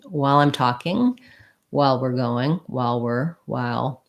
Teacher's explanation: So we have the diphthong I, and then we have the schwa before the dark L